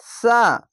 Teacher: এখানে একটি সিন একটি ছোট সিন বড় সিনের মতন হবে না একটি সা আছে হালকা জিহ্বে বের করে উচ্চারণ করতে হবে